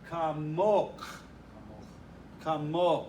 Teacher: But the feminine, the accent's on the last syllable, and it's kamok.